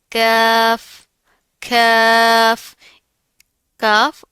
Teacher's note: का जब जुबान की जड़ ऊपर के सख्त तालू से लगेगी तो काफ अदा होगा। यह बारीक पढ़ा जाता है। हंठ गोल नहीं करने।